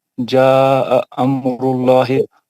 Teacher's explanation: लामी जलाला से पहले पेश है, उसको सर मोटा पढ़ेंगे